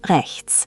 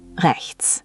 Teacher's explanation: This one has a bit of a tricky ch sound, like the ch in lock or Bach, but try to make it softer, almost like you're clearing your throat gently.